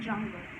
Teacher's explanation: A plosive followed by fricative, as there is closure and friction in the same place. But note that affricates are always analyzed as only one phoneme.